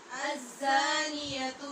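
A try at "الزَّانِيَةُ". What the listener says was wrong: زانی ٹھیک پڑھ رہے آپ، زا پہ سیٹی کی آواز پیدا کریں اور شد کی صورت میں اور زیادہ شدت بھی پیدا کریں. الزانیۃ. الزانیۃ.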